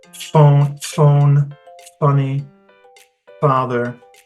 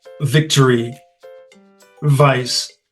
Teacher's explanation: Okay, and if you make the sound, phone, funny, father, you'll notice that you're breathing out as opposed to the V sound like victory, vice.